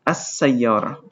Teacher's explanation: sometimes the L sound does not appear because of what we call sun and moon letters